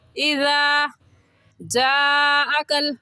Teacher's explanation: और नरमी से पढ़ने का तरीका ये है कि अपनी ज़बान की नोक दोनों दांतों के दरमियान में लाने से ज़ाल निकलता है। ज़ाल की जगह ज़ा पढ़ना दुरुस्त नहीं है।